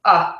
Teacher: it's the little upside down e that you see in the dictionary essentially that is a very relaxed vowel very unstressed it's it's very short and your mouth doesn't do a whole lot it's the uh sound you can see it's just very neutral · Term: schwa